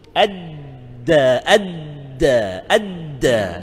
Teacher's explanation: No, di tu hujung lidah. Di kan, huruf dal hujung lidah kita dekat dengan gigi kacip atas tu, dekat langit lembut ujungnya.